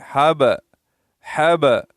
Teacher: اور حب، یہ ہا ہے، ہا کو اپنے مخرج سے ادا کریں گے، حلق سے. با ساکنہ ہے، با کے اوپر سکون ہے، تو سکون کی وجہ سے با کو ایک قسم کی جنبش دیں گے. حب، حب، اکثر لوگ پڑھتے حبلن، حبلن غلط ہے.